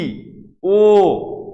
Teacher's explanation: আর সংবৃত উচ্চারণ ই, ও, অর্থাৎ ঠোঁট আমার সরু হয়ে আসছে, অর্থাৎ এটি আমি চাপিয়ে দিচ্ছি, অকে আমি ও করে দিচ্ছি